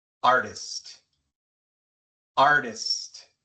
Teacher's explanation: Tenemos R-T-I y la T viene al principio de una sílaba no acentuada porque la sílaba acentuada es la primera